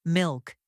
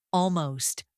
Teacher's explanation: Feel how the back of the tongue rises for the dark L.